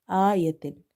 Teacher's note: we will stretch Hamza because of having vertical fatha